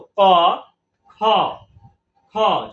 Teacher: একদম জিহবার মূল থেকে লাগবে পিছন থেকে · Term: জিহবা মূলীয় বর্ণ